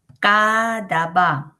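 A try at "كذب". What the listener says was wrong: আচ্ছা, কাযাবা এটা একটু মানে গহজ ঘষে উচ্চারণ করতে পারলে ভালো হয়। কাযাবা।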